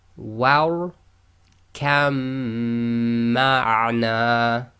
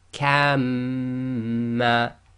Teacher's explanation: So we ignore the ba, join the kaf directly to the mim.